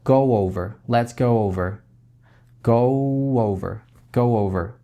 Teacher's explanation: Губы у вас немножко округлены будут.